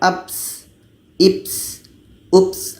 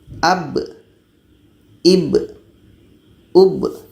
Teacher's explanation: kita bacanya adalah secara jahar jelas dan ada qalqalahnya, ada pantulan